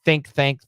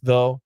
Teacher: there's one th with air and one th with uh vibration